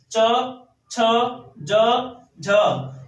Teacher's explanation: च, छ, ज, झ, ये होते हैं स्पर्श संघर्षी व्यंजन